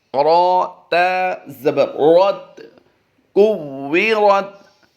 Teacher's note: را کو پر کرتے ہوئے دوسرے حرف کے ساتھ ملا دینا ہے